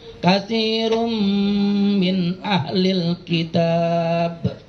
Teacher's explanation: tanwin ketemu mim hukumnya idgham bi gunna